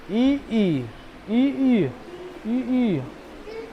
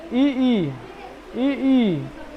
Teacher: ऊपर जाएगा वो मतलब तालु इ ई मतलब तालु ठीक है इ ई का उच्चारण स्थान तालु